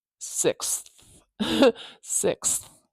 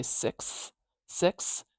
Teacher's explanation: to make it sixth in a sequence, we have to say that TH sound, at least briefly.